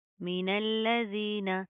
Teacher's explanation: من الذین میم زیر می نون لام زبر نل من لام زبر لا من اللہ زال یا زیر زی نون زبر نا من الذین لام کے اوپر شد آ رہی ہے سختی سے مضبوطی سے جما کر پڑھیں گے ٹھیک ہے. زال کے اوپر کیا زبان باہر کی طرف آئے گی.